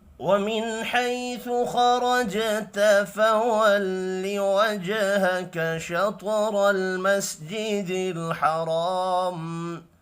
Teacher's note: نون ساکن کے بعد حا ہے، اظہار حلقی ہوگا، غنہ نہیں ہوگا۔ حیالین ہے، خا اور را پر پڑھے جائیں گے، جیم ساکن پر قلقلہ کریں گے